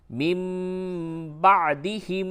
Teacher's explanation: نون ساکن کے بعد با آوے تو قلب ہوتا ہے، یعنی نون ساکن کی آواز کو میم سے بدل کے پڑھتے ہیں